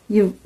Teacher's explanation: கீழிதழும் மேல்வாய்ப்பல்லும் இணைவதால் பிறக்கும் எழுத்து